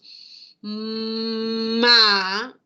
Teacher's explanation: cuando lo acompañamos de una consonante y tenemos ma, no hay ninguna explosión que acompañe a la producción de ese sonido consonántico